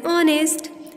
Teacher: we say an honest instead of a honest man, because H remains silent here